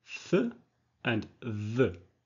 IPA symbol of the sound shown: θ ð